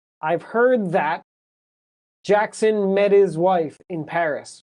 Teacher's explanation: So I've heard that, the D disappears in heard.